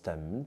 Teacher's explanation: le T influence ici le me et le transforme en ne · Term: Assimilation de lieux d'articulation